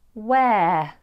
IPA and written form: weə (where)